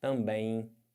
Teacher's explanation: Você, além de estar nasalizando o E, você tem esse M que vai ficar com som de I. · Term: Ditongo